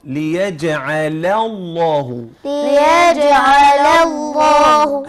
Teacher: تعلمنا كيف ننتقل من اللام المرققة لللام المفخمة